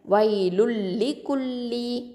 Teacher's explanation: இதில் பாருங்கள், வைலுன் அப்படிங்கிறது ஒரு வார்த்தை, லிக்குல்லி அப்படிங்கிறது இன்னொரு வார்த்தை. அப்போது இந்த லுன் அப்படிங்கிறதுல உள்ள தன்வீனில் உள்ள நூன் சாக்கினா இந்த லாமோட இணைஞ்சிரும். ஆனால் குன்னா கொடுக்க மாட்டோம். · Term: இதுகாம் பி கைரி குன்னா